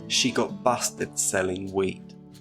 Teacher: Did you hear how E in she is shorter than the E in weed? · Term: shortened E sound